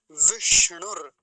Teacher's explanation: तो विष्णु चलता है लोगों का दंती सकार बना देते हैं दंती सकार नहीं होगा ना तालव्य सकार कैसा है मूर्धन्य सकार